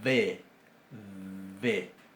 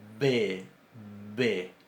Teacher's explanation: Sabemos, porque recordamos que alguna vez en la escuela se nos enseñó que la B corta o la V, como se dice en España, tenía una pronunciación labiodental. B, B. Y en cambio, la B larga tiene una pronunciación bilabial.